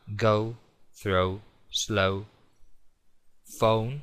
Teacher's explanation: las palabras que suelen terminar en O en inglés no es una O seca como en castellano, es un diptongo O